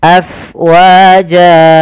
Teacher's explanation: alirkan nafasnya, karena fa itu harus ada angin yang kita keluarkan karena dia sifatnya hams, mengalirnya nafas.